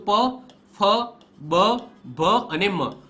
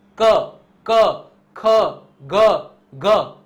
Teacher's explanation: કરો મોઢું ખુલ્લું રાખીને આ બોલવાનું ટ્રાય કરો બોલાશે જ નહીં પ માં હોઠ છે એ બંને ભેગા કરવા જ પડે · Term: ઓષ્ટ્ય